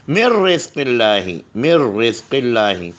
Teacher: یہاں پر ادغام ہے لیکن ادغام میں نون گننا نہیں آئے گا